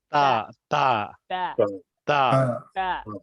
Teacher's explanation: जबान की नोक जब ऊपर वाले सामने वाले 2 दांतों की जड़ से लगे तो इससे ता अदा होता है।